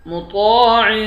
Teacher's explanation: طا کو ایک الف کے مقدار کھینچ کر پڑھیں گے، طا کو موٹا پڑھیں گے۔ عین کے نیچے دو زیر ہے، یہاں پر اخفا کریں گے۔